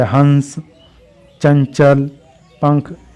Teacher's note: जिस वर्ड के उच्चारण में यानी बोलने में वायु नाक से बाहर निकलती है, उन्हें अनुस्वर कहते हैं। मुंह से भी निकलती है लेकिन नाक से भी।